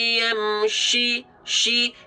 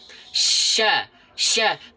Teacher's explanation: Karena huruf sheen memiliki makhraj di tengah lidah.